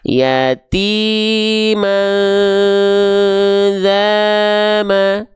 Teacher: Nada kita tetap flat. Tapi tetap dua kali ayun kadarnya.